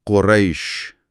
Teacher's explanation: رے سے یا کی طرف پھسلتے ہوئے، ر یا۔ بہترین، فرق واضح ہے۔ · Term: یائے لین